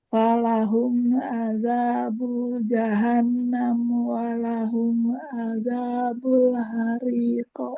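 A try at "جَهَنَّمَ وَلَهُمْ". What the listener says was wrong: Kalau Ibu Yati mau waqaf boleh, jahannam boleh. Tapi kalau diwasal juga boleh, cuman harus dibaca maknya. Jangan jahannam walahum, enggak. Jahannama walahum. Kalau mau diwasal.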